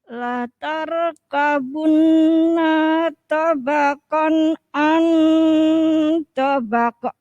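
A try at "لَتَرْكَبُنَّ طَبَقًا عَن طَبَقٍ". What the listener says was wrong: Ya, masih kayak gini sebenarnya bukan karena enggak paham, tapi tidak terasa. Masih rono jedanya akhirnya terasa agak panjang.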